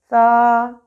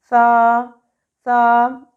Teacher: آپ کی زبان کی نوک ثنایا علیہ مینس سامنے کے دو دانتوں کے کناروں سے ٹکرائے گی